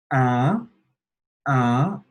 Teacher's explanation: it's this nasal sound in the back of your throat.